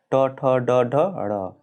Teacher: जिन वर्णों का उच्चारण जिह्वा को मूर्धा से लगने से होता है उन्हें मूर्धन्य कहते हैं